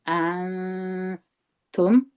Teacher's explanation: همزه په زور د نون سره یو ځای کوي، نون پسې تا راغلی ده، دغه نون بیا اخفا کیږي